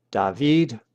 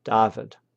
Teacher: The Greek accent is on the last syllable Davided while the Latin accent is on the next to last syllable Davidid.